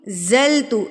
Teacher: زا آپ نے مضبوطی سے ادا کرنا ہے کیونکہ یہ سیٹی والے حروف میں سے ہے